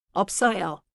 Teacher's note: keep the lip stop before the strong sound